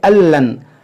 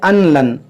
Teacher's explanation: बाद में क्या पढ़ते हैं अनलन, अन, तो ये अन यहाँ नून साकिन की आवाज़ नहीं आएगी, नून साकिन साइलेंट होगा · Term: इदगाम